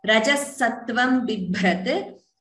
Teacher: Please note only the second bha is mahaprana. First is alpaprana.